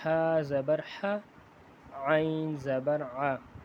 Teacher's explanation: عین ہا اور عین یہ گلے کے درمیان والے حصے سے ادا ہوں گے